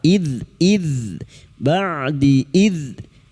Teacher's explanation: dzal sukun, hati-hati jangan dipantulkan ya, bukan qalqalah.